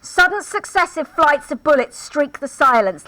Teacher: a specific form of alliteration called sibilants which is the repetition of an S sound